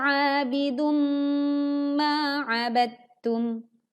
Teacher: Saat kita membaca ba, langsung dileburkan ke huruf ta. Seolah-olah dal-nya tidak kita baca